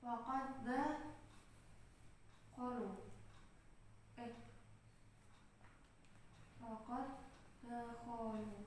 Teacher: Dal pertamanya bertanda sukun, dal yang kedua itu berharokat. Jadi dal yang pertama ini sudah dileburkan semuanya ke huruf dal yang kedua. Leburnya secara sempurna. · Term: idgham mutamasilain shaghir